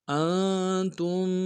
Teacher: حمزہ کو نون ساکن کے ساتھ ملانا ہے، نون ساکن میں غنہ کریں گے